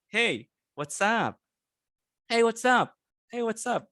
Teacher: you don't raise the tone it's it's a up and then down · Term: regular tone going down